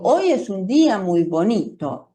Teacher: Por ejemplo, si son sentencias que son afirmativas o negativas, cuando yo las expreso al final de la frase, al final de la sentencia, voy a notar que mi voz, el tono de voz baja, es decir, que tienen un tono de voz descendente